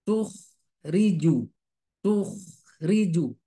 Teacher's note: jadi khnya dia tebal ya jadi sekali lagi untuk menebalkan suara angkat pangkal lidahnya